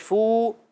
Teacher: واو مدہ ایک الف کھینچیں گے